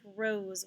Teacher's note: voiced s like rose when following a voiced letter the s sounds like z